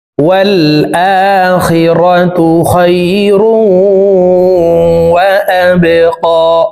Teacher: বা কলকলার হরফ নিচের দিকে ধাবিত করে ধাক্কা দিয়ে উচ্চারণ করতে হবে